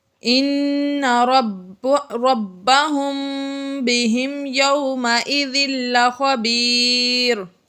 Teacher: اس کے بعد میم ساکن کے بعد با آ گیا تو یہاں پر اقلاب شفوی کا قاعدہ جاری ہوا۔ میم ساکن کے بعد حرف با آ جائے تو یہاں پر غنہ ہوتا ہے